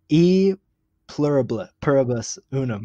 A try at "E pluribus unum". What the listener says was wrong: That one is A. The E is in Latin. It's pronounced A pluribus unum.